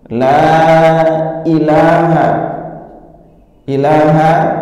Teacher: Pertama lamnya, la itu dua harokat.